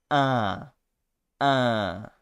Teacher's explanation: I think that we nasalize an A, but a very open one. So you do something like a, and then un.